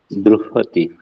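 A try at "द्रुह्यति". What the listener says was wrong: Druhyati. No, not druhati, druhyati.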